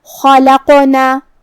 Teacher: کلمت خلقنا میں یہاں خا ہے، خا کی ادائیگی حلق کے اوپر والی حصے سے ہے تو ہم خا کو وہیں سے پڑھیں گے. خا حروف تفخیم میں سے بھی ہے تو ہمیں اسے بھاری آواز میں پڑھنا ہے. · جو کہ اس پہ جزم ہے تو یہاں قاف کا حکم ہے قلقلہ. قلقلہ کا معنی ہے حرف ساکن کو ہلانا، تو ہم قاف کو ہلاتے ہوئے یہ کلمہ کو ادا کریں گے · قاف کی ادائیگی زبان کے جڑ اور تالو کے نرم حصے سے ہے. قاف حروف تفخیم میں سے بھی ہے تو ہمیں اسے بھاری آواز میں پڑھنا ہے.